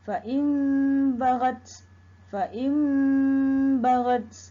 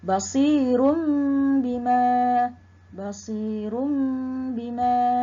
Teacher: menukar bunyi nun mati atau tanwin kepada bunyi mim. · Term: iqlab